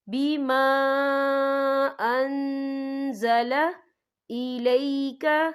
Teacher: بما یہاں خالف سے پہلے زبر ہے اور اس پر مد بھی ہے، تو ہم یہاں 3 یا 4 حرکت کے برابر کھینچ کے پڑھیں گے